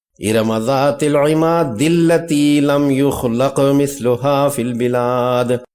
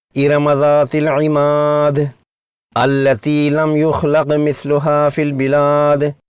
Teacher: پہلی آیت کے آخری حرف دال کا دوسری آیت کے شروع کے دوسرے حرف لام مشدد سے ادغام کیا ہے اور پہلے حرف یعنی حمزۃ الوصل کو حذف کر دیا ہے۔ اور اگر ان کو الگ الگ پڑھنا چاہیں تو پڑھیں گے، ارم ذات العماد التی لم یخلق مثلها فی البلاد۔